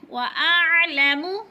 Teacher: عین حروف حلقی میں سے ہے، حلق سے نکالنی ہے اور ادھر قلقلہ نہیں کرنا